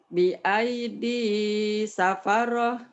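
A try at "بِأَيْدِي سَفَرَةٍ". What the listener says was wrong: Jangan ragu-ragu ya. Safaroh. Nggak ada tasdid.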